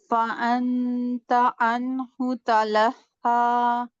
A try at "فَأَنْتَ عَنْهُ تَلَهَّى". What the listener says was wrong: فَأَنْتَ، انت اخفاء میں آپ نے کیا کرنا ہے کہ اخفاء میں نون کو ٹچ نہیں بس کرنا. ٹھیک ہے، نون کے مخرج کو زبان جو ہے دانتوں کے پیچھے لگانی نہیں ہے، زبان کو ہوا میں معلق رکھیں.